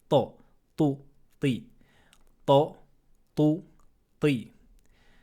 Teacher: la lettre ta se prononce en collant le bout de la langue à la racine des incisives supérieures, juste ici, à ce niveau-là, juste au début du palais. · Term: lettre to